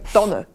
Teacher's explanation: Im Mittelland und der Nordostschweiz sagt man Tanne mit einem unbetonten Ä.